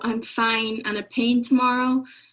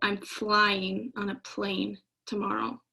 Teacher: it's just missing that l sound which is why they call it deletion